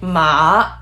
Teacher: a low tone it's supposed to be a little squiggly like down and up